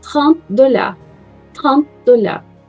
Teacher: Quase vocês não vão escutar o som do T.